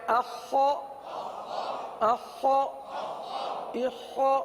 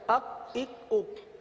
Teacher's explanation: خا کی ادائیگی کے بجائے کاف نکل جاتا ہے, اک اک اک. خا کے بجائے اخ کاف بن جاتا ہے, خا کے بجائے کاف بن جاتا ہے.